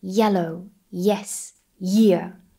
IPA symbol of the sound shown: j